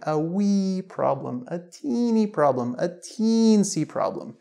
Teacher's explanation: all three of these words, they use the sound ee. And you can stretch it out when you're saying it.